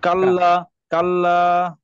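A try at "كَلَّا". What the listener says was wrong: Good. লাতে একটু টান হবে, কাল্লা।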